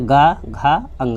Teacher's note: प्रत्येक वर्ग का तीसरा, चौथा और पांचवा जो वर्ण होगा वो सघोष कहलाएगा।